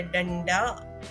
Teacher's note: ड से पहले अनुस्वार है और इसलिए इस अनुस्वार का अर्थ है ण